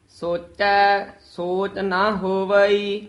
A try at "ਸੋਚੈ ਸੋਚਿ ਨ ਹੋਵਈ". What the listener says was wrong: ਸੋਚੈ ਪਦ ਤੇ ਵੀ ਥੋੜਾ ਜਿਹਾ ਠਹਿਰਾ ਯਮਕ ਚੀ ਲਾ ਕੇ ਬੋਲਣਾ ਹੈ। ਸੋਚੈ ਸੋਚ ਨਹੀਂ ਕਹਿਣਾ। ਸੋਚੈ ਸੋਚ ਨਾ ਹੋਵਈ, ਨੰਨਾ ਮੁਕਤਾ ਹੈ। ਕਈ ਨਾ ਨੰਨੇ ਕੰਨਾ ਲਾ ਦਿੰਦੇ ਹਨ। ਨੰਨੇ ਮੁਕਤੇ ਦਾ ਉਚਾਰਨ ਨਾ, ਜੇ ਨੰਨੇ ਕੰਨਾ ਲਾਵਾਂਗੇ ਤਾਂ ਇੱਕ ਮਾਤਰਾ ਵੱਧ ਜਾਏਗੀ, ਦੋ ਮਾਤਰਾ ਹੋ ਜਾਣਗੀਆਂ।